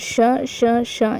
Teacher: ये हमारे क्या होते हैं अघोष और महाप्राण होते हैं